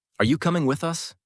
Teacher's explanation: Notice how your pitch rises on you and with us, then falls at the question mark.